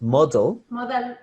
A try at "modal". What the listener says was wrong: Modal. No, modal, no me abres tanto la boca. Mira mi boca. Modal.